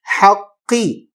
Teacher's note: قاف کو باریک نہیں، موٹا پڑھیں گے